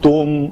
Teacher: تا کے اوپر پیش ہے تو شفتین گول ہوں گے